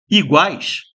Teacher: Eu tenho U, que é uma semivogal. O a, que é o som mais forte de iguais, é o a, é a vogal. E depois eu tenho o I, que é maior semivogal. · Ditongo que é o primeiro, o som aumenta do u pro a, depois o som diminui do a pro i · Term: tritongo